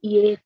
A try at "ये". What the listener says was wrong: You have to open your mouth. Open your mouth.